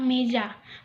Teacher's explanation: Vokal E termasuk dalam vokal sedang dengan posisi lidah berada di bagian depan, contohnya pada kata meja.